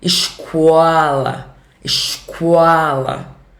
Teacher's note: Ainda bota meio que uma semivogal, né? Entre o O e o A.